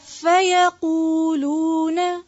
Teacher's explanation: یا کے اوپر صرف زبر ہے، اس کو لمبا نہیں، یقولون نہیں پڑھیں گے، یقولون.